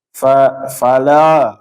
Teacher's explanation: yang lam berharokat fathah a, la, jangan dia akhirannya itu menebal.